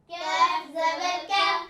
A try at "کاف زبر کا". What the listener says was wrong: کیاف نہیں کہنا، کاف زبر کا،